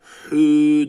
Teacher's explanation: boğazımızı sıkarak hü diyoruz hırıltı olmadan